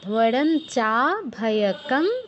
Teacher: মানে ঙ হচ্ছে আমাদের অনুনাসিক্য বর্ণ, আর অনুস্বার স্থলে উচ্চারণ হবে ঙ হসন্ত